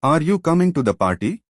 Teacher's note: The Voice Rises at the end effect Rising intonation often signals a question uncertainty or a request